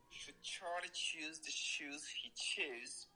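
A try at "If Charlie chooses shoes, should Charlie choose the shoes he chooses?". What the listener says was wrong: Not bad at all, sir. Not bad at all. Good stuff.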